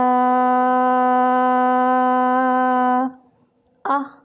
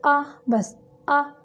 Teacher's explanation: हमज़ा झटके से अदा करेंगे, लंबा नहीं करना। हमज़ा ज़बर आ, बस आ।